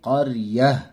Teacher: یہاں پر رکیں گے تو تا ہا میں بدل جائے گی، تو پڑھیں گے قریہ۔